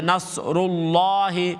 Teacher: فتح ہو تو اس کو اس اللہ کا نام فل ماؤتھ سے ادا کرتے ہیں